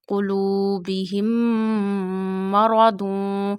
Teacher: When after meme sakin another meme come, you take meme sound into the nose and stretch up to one alif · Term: idgham shafawi